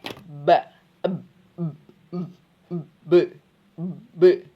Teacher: Pertemuan dua bibir. Jadi bersentuhan antara bibir atas dan bawah.